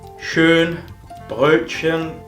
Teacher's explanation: La O con dos puntos sonaría como una O y una E a la vez. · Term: la O umlaut